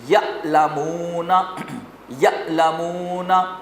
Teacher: عین کی آواز تھوڑی بہت نرم ہوتی ہیں اور بغیر جھٹکے والی ہوتی ہے، اس میں کوئی جھٹکا نہیں آئے گا، کوئی سختی نہیں ہے اس میں، جیسے یعلمون۔